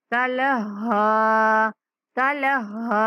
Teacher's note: یہاں ہا مشدد ہے تو سختی کے ساتھ پڑھیں گے